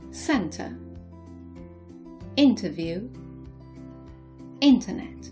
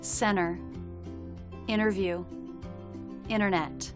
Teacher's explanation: in American English, the letter T is sometimes dropped after an N. For example, in British English we would say centre, interview, internet.